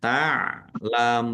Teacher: Mim domah wawu sukun mat tobi'i. Tetapi karena di akhir kata maka menjadi mat arif lis sukun. Dibaca panjang boleh 6, 4 atau 2 harokat.